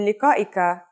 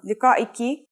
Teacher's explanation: When you change the last letter in liqa'ika, a, to an e sound, liqa'iki